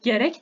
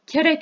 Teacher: Türkiye türkçesinde g ile başlayan ve kökeni Türkçe olan sözcükler Özbek türkçesinde K sesi ile başlar